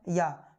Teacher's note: या का उच्चारण तालव्य से होता है। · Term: अर्धस्वर